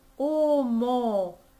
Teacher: they're almost identical the o just has a little bit of nasality